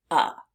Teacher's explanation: make F now let's look at the vowel in the word we see the vowel e but it's being pronounced as uh as if it were a short u